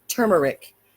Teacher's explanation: The first letter T is a stop. Disrupts airflow.